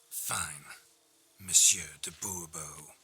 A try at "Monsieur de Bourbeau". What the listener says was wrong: The emphasis falls on the last syllable.